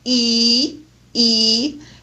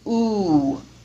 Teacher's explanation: the most spread vowel is e e and the the most rounded vowel is ooh